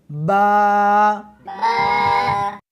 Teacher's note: اس حرف کو دونوں ہونٹوں کے ساتھ ملا کر پڑھیں گے